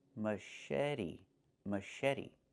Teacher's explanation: The CH makes a soft sh sound, like in fish, mush.